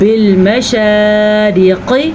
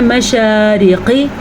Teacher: برب المشارق، را کو باریک پڑھنا ہے، شین کو ضرور لمبا کرنا ہے، کیونکہ شین کے اوپر کھڑی زبر ہے، لیکن را اور قاف کو ذرا سا بھی لمبا نہیں کر سکتے۔